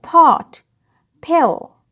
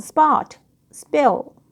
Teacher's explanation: When it comes at the beginning of the word, an aspiration or a puff of breath is felt